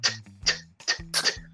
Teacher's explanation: And if you put your hand in front of your mouth like this and go t, t, t, t, you can feel like a little puff of air, like when you go to the eye doctor, that puff of air in your eye. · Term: traditional T sound